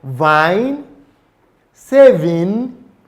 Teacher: there's addition of the vocal cord vibration, which creates a more voiced and resonant sound. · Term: labiodental fricative V